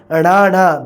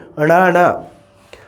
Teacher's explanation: दोने अखर जो तुसी अणाणा बोलना है तो तुहाडी जबान 2 वारी उल्ट के जीभ जड़ी उल्टी हो जाएगी तो तालू दे नाल लगेगी